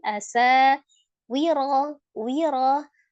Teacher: ra berbaris fathah dibacanya tebal ya, tafkhim